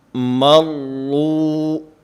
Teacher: مروا جو پہلا کلمہ ہے، اب اس میں را مشدد ہے، ایک تو اس میں ٹھہراؤ، مضبوطی اور جماؤ ہونا چاہیے، اور اس کے ساتھ ساتھ اس را کو پر اور موٹا پڑھنا ہے، اس لیے کہ کل کے سبق میں یہ بات میں عرض کر چکا ہوں کہ را مشدد ایک حرف کے حکم میں ہوتی ہے، اور موٹا اور باریک ہونے میں اپنی حرکت کے تابع ہوتی ہے۔